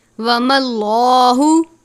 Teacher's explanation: لفظ اللہ کے لام سے پہلے زبر ہو تو لام کو پر پڑھتے ہیں